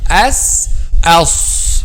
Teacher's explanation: so there is no vibration of the vocal cords